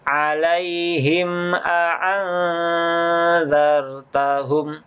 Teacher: Jadi mimnya jangan didengungkan, jangan dibaca alaihim a'anzartahum. Itu keliru, tapi langsung masuk ke hamzahnya. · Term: izhar syafawi